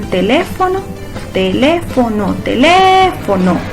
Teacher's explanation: su sílaba tónica la lleve en la antepenúltima · Teléfono, sílaba tónica en teléfono, teléfono, teléfono, en le, ¿verdad? Esa es una entonces esdrújula, ya que su sílaba tónica la lleva en la antepenúltima sílaba. Última es no, penúltima es fo, antepenúltima es le.